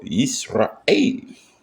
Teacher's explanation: this is a glottal stop. This means there's a slight pause between the pronunciation of Ra and A.